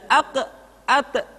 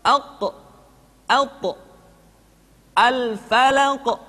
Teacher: ketika mengucapkan qaf dan tho terdengar menebal suaranya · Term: Qalqalah